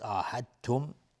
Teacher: عاهدتم دال بعدش تا اومده، ادغام متجانسین هست